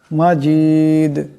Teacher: মিম আসছে ঈদগাম হয়ে যাবে ঈদগামের আকারে পরিমাণ গুন্না হবে মাজিদ এখানে দম ছাড়লে দাল সাকিন হয়ে যাবে টক্কর খাবে